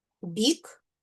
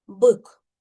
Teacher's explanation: В слові бік перший звук б вимовляємо м'яко, а в слові бк перший звук б вимовляємо твердо.